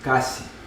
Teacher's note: if it was a word in Japanese that was written kashi, it would actually be pronounced kashi, where essentially there's kind of like a whispered vowel at the end.